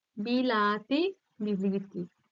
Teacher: আ ছিল এখানে ই হয়ে গেল সবগুলো ই হয়ে গেল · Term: স্বরসঙ্গতি